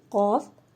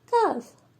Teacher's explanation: ایک قاف ہم حلق سے کہیں گے اور کاف ہم تالو سے زبان ٹچ کریں گے